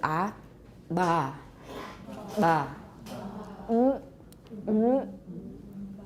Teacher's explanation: We've got little bubbles of air coming up because we have regular vibrations because we're often using creaky voice when we're doing implosives. · So the vocal folds are closed, and they're moving downward. And usually, although they're closed, actually a little air is coming up, so they're not completely closed.